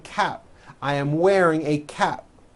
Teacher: and you don't hear the P